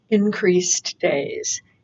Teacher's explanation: those two words really link together while you're pronouncing them. Increased days, very similar in the ending and the beginning.